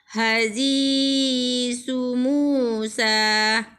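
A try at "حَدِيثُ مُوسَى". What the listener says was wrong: Dal ya. Hadis Musa. Jangan hadi ya, hadi dal. Hadis Musa.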